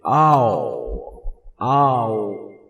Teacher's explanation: آ پہلے زبان نیچے ہوگی، جیسے آپ او کہیں گے پیچھے چلی جائے گی